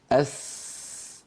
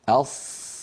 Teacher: أيضا نضع رأس اللسان على أسفل الصفحة الداخلية للثنايا السفلى. أس، ولكن أقصى اللسان ومؤخرة اللسان لا ترتفع كما فعلنا ذلك في الصاد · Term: السين